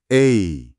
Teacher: 그냥 애가 아니고 애에서 시작해서 이로 스르륵 미끄러지듯이 소리를 내야 돼요.